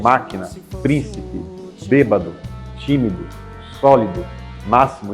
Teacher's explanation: a sua antepenúltima sílaba é aquela que é pronunciada com mais força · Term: proparoxítonas